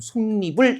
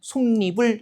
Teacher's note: 그냥 합성어나 파생어를 크게 두 부분으로 나누었을 때 앞부분의 끝이 자음이고 그 다음에 뒷부분의 시작이 이야, 여, 요, 유일 때 뒷부분의 첫 소리에 니은을 넣어서 발음한다는 겁니다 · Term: 니은 첨가